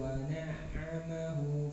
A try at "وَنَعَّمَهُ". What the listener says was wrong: Hu yang terakhir kurang panjang. Wa na'amahu fayahu. Antum tadi masih satu itu sampai harokat. Dua harokat ini. Wa na'amahu fayaqulu.